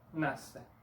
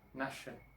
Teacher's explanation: El dígrafo SC, cuando aparece antes de una E o de una I, y el dígrafo S se cedilla en portugués, suenan como sonido de S en Brasil y sonido de SH en Portugal.